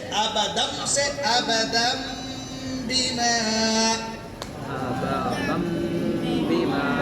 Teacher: تنوین میں جو نون ہے اس کی آواز کو ناک میں چھپا لیں گے اور ایک غنہ کی مقدار آواز ناک میں لے جائیں گے. ابدم سے ابدم بما. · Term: اقلاب